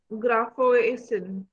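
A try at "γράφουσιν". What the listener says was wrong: Slowly. See, you remove completely omega. Graphusin. Graphosin.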